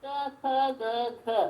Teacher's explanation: ಕವರ್ಗಗಳು ಎಲ್ಲಿ ಹುಟ್ಟಿಕೊಳ್ಳುತ್ತೆ ಅಂದ್ರೆ ಕಂಠದಲ್ಲಿ ಹುಟ್ಟಿಕೊಳ್ಳುತ್ತೆ